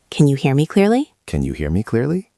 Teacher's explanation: The intonation goes up at the end because it is a question.